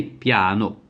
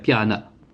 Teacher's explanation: je sais que le O est un O fermé, eh bien je garde un O fermé, piano. Je ne cherche pas à faire piana, une sorte de E muet de schwa, comme ce serait par exemple le cas en français.